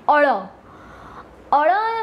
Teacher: જ્યારે ગુજરાતીની અંદર તમે અળ વ્યંજનનું અથવા તો અળ ધ્વનિ સંકેતનું ઉચ્ચારણ કરો છો ત્યારે જીભ ઊંચે જઈને પાછી નીચે પડે છે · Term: થડકારવાળો ધ્વનિ